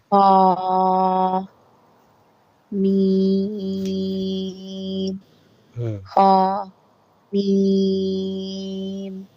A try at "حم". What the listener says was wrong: Ha, you are not stretching the ha. Ha, 1 to 2 seconds. Stretch the ha. Yeah, standing fatha coming.